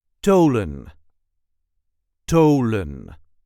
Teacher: the TH is pronounced as a hard T, not the English TH